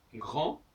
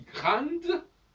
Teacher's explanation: Par exemple, grand, j'entends le son en, ça n'est ni le A ni le N. C'est un mélange des deux.